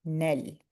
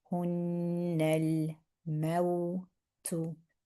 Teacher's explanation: So hun, and now we're reading the na with its vowel and joining it into the lam.